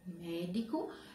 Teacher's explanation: A palavra médico, médico é uma palavra pró-paroxítona, porque ela tem o acento também, ó. E a sílaba mais forte é mé